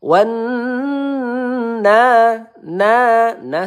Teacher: ada nun bertasydid ya kita tahan dua atau tiga harakat ya gunah musyaddadah